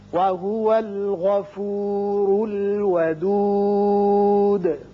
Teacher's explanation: غین حروف مستعلیہ میں سے ہے، پر پڑھیں گے